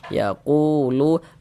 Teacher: Sebelum waw sukun ada ada harokat dhammah, maka huruf yang memiliki harokat dhammah kita baca panjang. Sehingganya lu dibaca panjang. Mad tabi'i panjang 2 harokat.